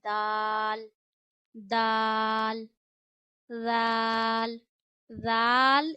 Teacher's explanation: हमेशा नरम पढ़ा जाता है बिना सीटी बिना सख्ती के और आपने वैसे ही अदा करना है जैसे हमने ता को नरम पढ़ा था बिना सीटी के। · दाल की अदायगी बिल्कुल इसी तरह की जाती है जैसे हम ता की अदायगी करते हैं, यानी दाल को आपने जबान की नोक और ऊपर के दांतों की जड़ों से अदा करना है